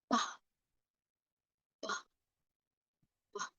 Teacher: A B consonant sound, as in pie, bike, and bus, is made with the two lips touched completely and then they release the sound suddenly. So for the B, it is pronounced as ba, ba, ba.